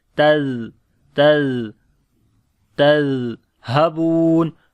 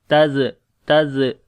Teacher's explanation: on the zal we make a soft sound, and also here is a rakhawa quality, like the continuation of your sound